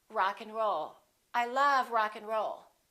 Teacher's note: we reduce the A and the D those disappear often